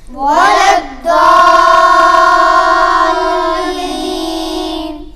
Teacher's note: زبان کی کروٹ جو ہے وہ دائیں بھی بائیں بھی دونوں کروٹ جو ہیں ان کو اوپر کی داڑھوں کی جڑ میں لگائیں گے تو ضاد ادا ہوگا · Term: ضاد کا مخرج